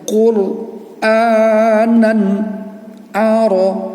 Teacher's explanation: Jadi suara nan itu tidak terganggu sama huruf ain, dia jelas suaranya. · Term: izhar